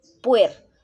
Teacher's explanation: La palabra puerta podemos decir que su sílaba tónica es puer. La sílaba puer es la que lleva la mayor fuerza de voz.